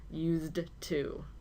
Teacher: The key to this pair is to remember that if the word to follows, you must use the version ending in D. Again, it's difficult to hear this because the D and the T sounds blend together